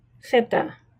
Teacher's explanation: if you're from Spain most parts of Spain you would say feta with a th like Feta like think